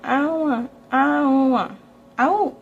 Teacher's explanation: When they're saying don't, it can sort of turn into own.